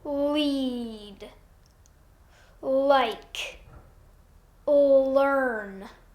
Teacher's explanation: i'm going to touch just behind my front teeth on that bumpy bony area right there it's a quick touch and release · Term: light l